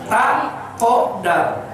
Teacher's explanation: Makhraj dal itu ujung lidah ke daging, ke gusi gigi depan.